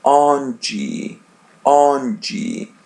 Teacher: As you see, the letter N, we pronounce it as a light N, on. And there is D by the end, we pronounce it as G, onde, onde.